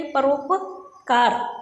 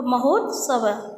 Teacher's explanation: तो ई, अ और ई मिलकर के वो ए हो जाएंगे, आ ई मिलके ए हो जाएंगे, अ और ऊ मिलके ओ हो जाएंगे, आ और ऊ मिलके ओ हो जाएंगे। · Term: गुण संधि